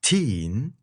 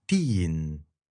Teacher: it's, again, a less percussive sound because your tongue's all the way forward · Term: Arabic's T